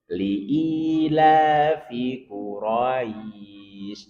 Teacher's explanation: li'i panjang la, panjang fi pendek